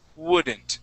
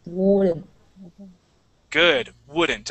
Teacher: when we say this word, we want to start out with more of an ooh sound